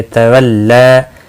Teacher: یہ اللہ کا لام نہیں ہے، یہاں پر لام باریک پڑھا جائے گا